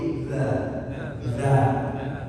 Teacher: bukan di gigi tapi di belakang gigi atas ujungnya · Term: Huruf dal